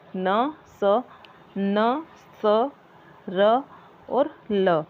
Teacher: वर्ष ध्वनियों के उच्चारण में जीवा की नोक दंत पंक्तियों के ऊपरी भाग को स्पर्श करती है। वर्ष व्यंजन न, स, र, ल को कहते हैं।